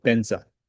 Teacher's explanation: the letter V doesn't exist in Tibetan language. So rather than V sometimes they say B.